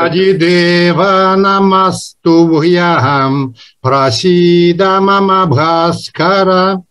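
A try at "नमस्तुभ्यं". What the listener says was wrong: Very good, very beautiful, except бьям. Бьям should be more quicker, okay? The quickness should come, otherwise it's good.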